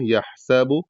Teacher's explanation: سین کو پتلا ادا کیا جائے گا سیٹی کے ساتھ